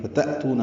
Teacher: فتأتون حمزہ ساکن جھٹکے سے ادا کریں گے، تو واو مدہ ہے.